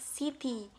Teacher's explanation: the syllable is weak when it has the close front unrounded vowel I. For the example like city, the second syllable is weak.